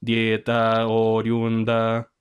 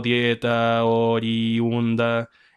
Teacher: la I deja de ser una semivocal y se transforma en una vocal completa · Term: hiato